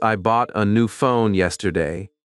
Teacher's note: For example, in the sentence, I bought a new phone yesterday, the words bought, new phone, and yesterday may carry the main stress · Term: sentence stress